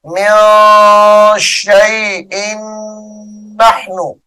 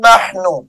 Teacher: ان نحن ادغام مع الغنہ ہو رہا ہے